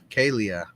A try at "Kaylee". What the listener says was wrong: Yeah, but you don't pronounce H as an A. It's Kaylee. like Raleigh.